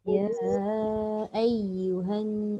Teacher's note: Ada tekanan dekat ya yang kedua tu sebab ada sabdu.